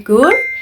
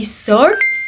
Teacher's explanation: Karena bunyi vokal itu meluncur, kuping kita yang bukan penutur Australia sering nangkapnya kayak ada bunyi R samar di akhir kata. Padahal sebenarnya gak ada huruf R yang diucapkan. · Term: vowel glide